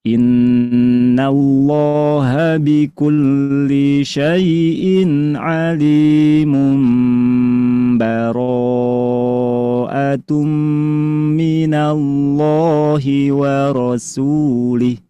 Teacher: amalkanlah hukum iqlab, yaitu menukar suara nun menjadi mim.